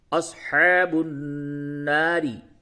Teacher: نون پہ تشدید ہے اس پہ غنہ کیجئے